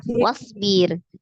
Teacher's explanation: ro sukun sebelumnya kasroh, berarti ro-nya dibaca tarqiq tipis ya